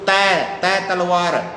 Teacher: तय तलवार दंत से बोला जाता है। जीभ की नोक दांत जहां से पैदा हुआ है ऊपर ले आपने वहां लगनी चाहिए।